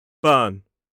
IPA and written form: bɜːn (burn)